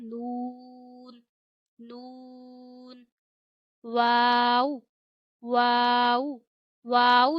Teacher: दोनों होठों को गोल करके अदा किया जाता है।